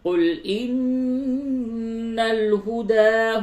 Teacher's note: نون مشدد ہے، جگہ پہ غنہ ہوگا